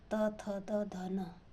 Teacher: उच्चारण करते हैं तो दांत से हो कर के जीभ टकराती है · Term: दंत व्यंजन